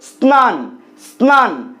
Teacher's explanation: দন্তস্ব যখন দন্ত নয়ের সাথে যুক্ত অবস্থায় থাকে সেই ক্ষেত্রেও কিন্তু দন্তস্ব দন্তস্বয়ের মতোই উচ্চারিত হয়